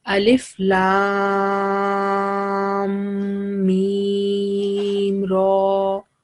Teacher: when you are joining lam with mim, so we put 2 second gunna sound as well.